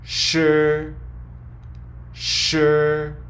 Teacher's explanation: similar to the English sh in ship but the tip of the tongue is a little further back in your mouth